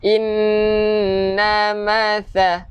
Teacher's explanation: Nun yang bersabdu wajibal gunnah, kita dengungkan dua harokat. Ingat, nun ni tak perlu panjang.